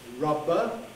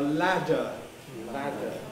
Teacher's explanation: you should hear the voicing going right through